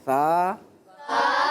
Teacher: यह है बगैर सीटी वाला हर्फ यानी अगर मैं इसमें चाहूं तो सीटी निकाल सकता हूं लेकिन सीटी नहीं निकालनी · तो आपने सा ऐसे पढ़ना है कि जबान बाहर नहीं निकलेगी जबान का किनारा ऊपर के दांतों के किनारे प लगेगा